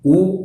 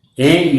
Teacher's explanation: U is a rounded vowel because we round the lips. A is an unrounded vowel because we spread the lips.